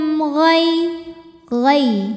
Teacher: Gai Gai ada hukum tajwid namanya Lin atau huruf Lin sebab ada ya sukun yang sebelumnya berbaris fathah maka cara bacanya dilembutkan atau dilunakkan